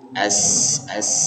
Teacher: kalau huruf Sin ini sifatnya Rah atau mengalir udaranya jadi harus dihembuskan jadi terasa hembusannya di ee ujung lidah nempel di gigi Sari